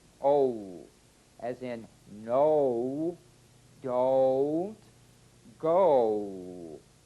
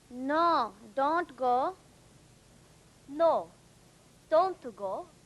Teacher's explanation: That's two sounds blended into one. O. Beginning with the number two position, but continuing into the smallest lip opening, number one. O. O.